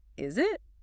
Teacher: the pitch almost always rises steeply on the final word, which is usually the pronoun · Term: high rising inflection